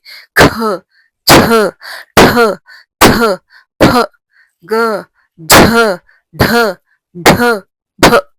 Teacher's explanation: इसके अंदर हम लोग ज्यादा प्राण डालकर बोलते हैं। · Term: महाप्राण